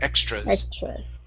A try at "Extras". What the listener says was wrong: There you go. That's it.